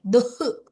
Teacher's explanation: अत्र विसर्ग अस्ति किल विसर्ग अत्र जिह्वामूल्य भवति हाफ् हा वक्तव्यं